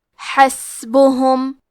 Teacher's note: کلمت حسبہم میں سین ساکن ہے، کیونکہ سین بھی حروف الہمس میں سے ہے تو ہمیں سین کو ہمسے سے پڑھنا ہے